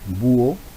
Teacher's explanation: Por ejemplo, en la palabra que estamos apreciando, búho, observamos la concurrencia vocálica, ¿no?, de la U y la O, una vocal cerrada y una vocal abierta, con una H intermedia que no le afecta en nada. Pero vean ustedes la importancia de que la U, que es la vocal cerrada, tiene la mayor fuerza de voz. · la U, que es la vocal cerrada, tiene la mayor fuerza de voz. Es más, lleva tilde. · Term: hiato